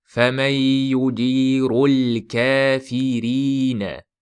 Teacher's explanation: Roni roi bilan kelyapti. Bu yerda tafhim bo'lmaydi, yengil o'qiladi. Tarqiq bo'ladi. فَمَنْ يُجِيرُ الْكَافِرِينَ kafirina qilib roni yo'g'onlashtirib qo'ymang.